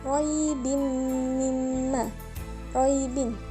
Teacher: tanwin bertemu dengan mim, maka bacanya idgham bi gunnah, mendengung. Mimma, ma-nya mad tabi'i.